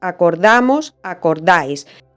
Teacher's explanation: que esas dos oes no son tónicas sino átonas acordamos acordáis las vocales tónicas en ambos casos son la a